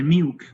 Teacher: Singapore English may pronounce milk, the dark L is not pronounced.